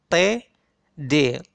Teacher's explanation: Lidah menghambat udara keluar yang ditempelkan pada alveolar atau pada gusi pangkal gigi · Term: Apico-alveolar